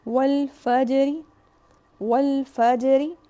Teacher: جب میں را کو، زیر کو ہلکا سا بھی پڑھوں گی تو چونکہ وہ زیر ہے تو را باریک ہوگا